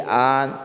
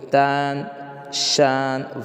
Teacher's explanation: نون صاف ظاہر ہے، ناک میں آواز نہیں جا رہی ہے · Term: نون ظاہرہ